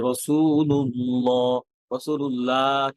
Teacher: আল্লাহ শব্দের লাম হেভি হবে ভারী হবে